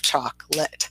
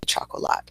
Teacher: So that O in the middle, we don't pronounce at all. It is gone.